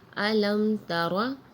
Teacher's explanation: میم ساکن کے بعد جو ہے وہ تا آ رہی ہے تو ہم نے یہاں غنہ نہیں کیا. علم ترى، یہاں علم ترى کر کے پڑھنا یہ غلط ہوگا.